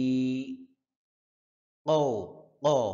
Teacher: হ্যাঁ কফ, জিহ্বার গোড়া থেকে উচ্চারণ হবে কফ।